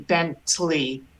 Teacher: Of course, it goes fairly fast, and if it's just using Hebrew for an American word or an English word, you'd say Bentley. The shva just goes by very quickly, but it is pronounced.